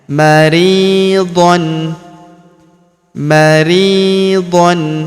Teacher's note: Huruf ri kita panjangkan dua harakat karena ya sukun di depannya.